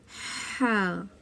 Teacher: ना ही हा पढ़ सकते हैं इसको हम पढ़ते हैं हा यह वसत हलक से अदा होता है हलक के दरमियानी हिस्से से · یہ وسط حلق سے ادا ہوتا ہے، حلق کے درمیانی حصے سے